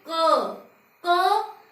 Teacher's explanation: क की आवाज कहाँ से आ रही है? कंठ, गले से, अर्थात जो हमारी वायु है वो गले को छू कर बाहर आ रही है